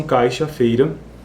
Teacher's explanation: O glide ou a semivogal não se manifesta foneticamente. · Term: redução de ditongos